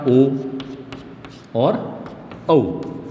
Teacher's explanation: इसमें होता है हमारा ओ और औ, इन दोनों वर्णों का जो उच्चारण होता है वो होता है हमारा कंठ और ओष्ठ से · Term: कंठोष्ठ